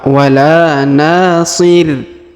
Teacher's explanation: huruf na kita panjangkan dua harakat karena di depannya terdapat Alif